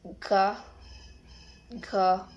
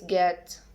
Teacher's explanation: One example is get. Characteristic velars stop and voice.